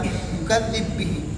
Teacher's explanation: با کا با میں ادغام صرف سوسی کے لیے ہے